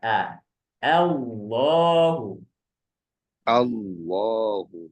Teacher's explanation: Tapi bunyinya tetap A ya, dari A, bukan O tapi A.